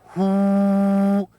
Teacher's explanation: The sound to cleanse and heal the spleen is hu, like the English word who, but with a stronger exhalation of breath